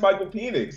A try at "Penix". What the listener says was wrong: watch y'all pronouncing that e like that bro just say penix